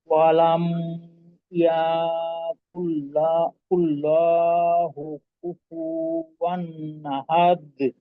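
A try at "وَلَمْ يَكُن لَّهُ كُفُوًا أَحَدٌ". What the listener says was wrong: আচ্ছা, কিছু কিছু এলোমেলো টান হয়ে গেল কিন্তু। আর কুল লাহু, তো এইখানে তো লহু হওয়ার সুযোগ নেই, লাহু শুধু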